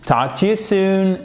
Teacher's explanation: vous ne prononcez pas le L, bien évidemment, dans talk.